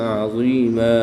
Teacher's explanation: 2 زبر کی تنوین کو وقف کی حالت میں الف مدہ سے تبدیل کر کے پڑھیں گے